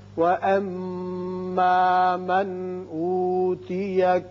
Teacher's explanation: وَأَمَّا مَنْ أُوتِيَ میم مشدد ہے، غنہ کریں گے. یہاں نون ساکن کے بعد حمزہ ہے، لہذا ہم یہاں اظہار کریں گے، اظہار حلقی